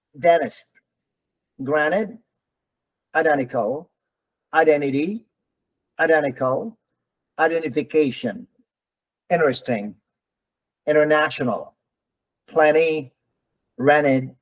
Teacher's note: So when the letter T, when the letter unstressed T is preceded by N, some people, some people in North America will drop the T and just pronounce the N · the T is dropped in the pronunciation and people will just pronounce the N.